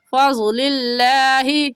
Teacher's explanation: लफ्ज़ अल्लाह से पहले ज़ेर आ गया तो लफ्ज़ अल्लाह को बारीक पढ़ेंगे। और बारीक पढ़ने का तरीका कि आपके दोनों होंठ फैल जाए।